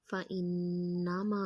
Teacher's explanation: نون مشدد پہ غنہ کریں گے